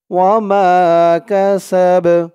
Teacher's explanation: এখানে অক্ফ করার কারণে, থামার কারণে বার উপরে জবরটা সাকিন হয়ে গেছে। সিন দিয়ে বা ধরলে যেমন উচ্চারণ হয় এখানে তেমন উচ্চারণ হবে।